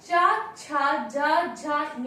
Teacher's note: इनका उच्चारण स्थान है तालु। क्योंकि जब हम चा, छा, जा, झा, या बोलते हैं, हमारी जिह्वा तालु का स्पर्श करती है, इसलिए इसका उच्चारण स्थान हुआ तालु।